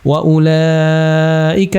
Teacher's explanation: Laika di sini bacaan mad wajib muttasil empat atau lima harakat